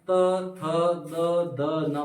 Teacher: हमारी जो जीभ है ना किसको करे स्पर्श दंत से यानी हम जब बोलते त तो दंत से स्पर्श करती है